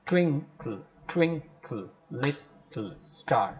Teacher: you have the first accent, first syllable taking the accent, taking the beat or taking the stress